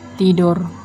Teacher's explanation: bunyi T dengan ciri-ciri mati, oral, apikodental, dan plosif